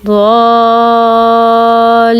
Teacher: اس کو 5 الف کے برابر لمبا کرتے ہیں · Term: مد لازم